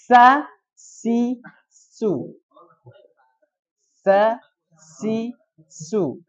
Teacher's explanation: Itu ujung lidah dengan gigi seri bawah. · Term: huruf sin